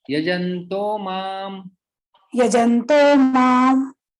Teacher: यहाँ पे जो विसर्ग है उसका ओ बन जाता है